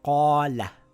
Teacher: so it's a long vowel, it reads as Qaala not Qala, Qaala stretching it for two counts